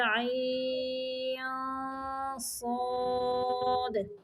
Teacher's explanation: عین کی ادائیگی کے بعد تھوڑا اخفا کر کے یعنی آواز کو چھپا کے پھر صاد کی ادائیگی کریں گے، عین، ادھر عین صاد۔